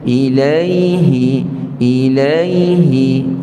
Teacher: ya tu mati ada sifat rakhawah pada dia yakni beri tempoh dulu pada ya